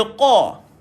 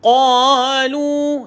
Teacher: Kalau tuan-tuan baca qaf itu dengan angin keluar, maka jadi qaf dah jadi huruf kaf. Sebab beza antara qaf dan juga kaf adalah Angin keluar dan angin tak keluar.